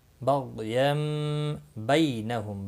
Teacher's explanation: بی یا لین ہے، تھوڑا نرمی کے ساتھ کھینچ کر ادا کریں گے